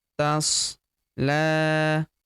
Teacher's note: huruf la kita panjangkan dua harakat karena terdapat tanda alif kecil di atasnya